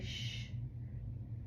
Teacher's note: When I touch my throat and say shh, I do not feel anything on my fingers. No vibration. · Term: unvoiced